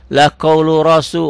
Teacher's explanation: Rohnya tebel. Tafhim, barisnya di atas.